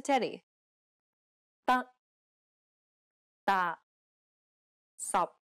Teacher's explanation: in English releasing a strong burst of air this is incorrect the final p t and K are unreleased in Cantonese this means that you must not release a burst of air when pronouncing this sound